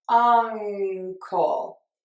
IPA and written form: ˈʌŋ.kəl (Uncle)